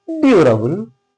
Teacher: So the stress is coming on due